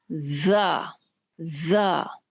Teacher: तो ये ज़ा जो है दबा के सीटी की आवाज़ भी इसके अंदर पैदा की जाएगी, और जब आप इसको अदा कर रहे होंगे तो एक तरह की आवाज़ आपके मुंह के अंदर गूंजेगी, बिन बनाने की आवाज़ जैसे होती है। जुबान को नीचे के दो दांतों के किनारों के साथ आप लगाएंगे तो ये आवाज़ पैदा होगी। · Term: सीटी वाले हुरूफ